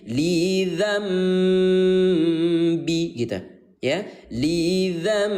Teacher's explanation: suara n kita ganti menjadi suara m.